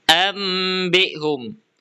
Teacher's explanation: nun atau tanwin diganti menjadi suara mim dengan dengung yang jelas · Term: iqlab